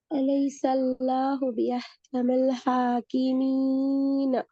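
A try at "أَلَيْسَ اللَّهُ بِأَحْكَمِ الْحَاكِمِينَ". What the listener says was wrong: இப்ப இந்த மிச்சம் கூட இழுபடுது. அதான் ப்ராப்ளம். ஒரு செகண்ட் ஒரு கவுண்ட்ல இருந்து 2 கவுண்ட் ஆகி இப்ப கவுண்ட் கூடிக்கொண்டு போகுது.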